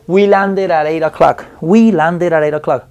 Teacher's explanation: vocal con vocal me convierte la d o la t en r